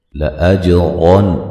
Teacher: اچھا، نون مشدد پہ غنہ ضروری ہے، لَأَجْرًا غَيْرَ مَمْنُونَ، جیم پہ قلقلہ کریں گے، را کو موٹا ادا کریں گے، را کے اوپر زبریں ہیں، ٹھیک ہے، را کو موٹا ادا کیا جائے گا، اور نون تنوین کا یہاں اظہار ہوگا، غنہ نہیں کریں گے، غین کو موٹا ادا کریں گے، یا لین ہے، را کو بھی موٹا ادا کریں گے، میم ساکن کا اظہار ہے، غنہ نہیں کریں گے، نو و مدہ ہے۔